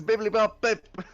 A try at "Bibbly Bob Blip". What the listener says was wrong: It's actually Bibbly Bob Blip with an L.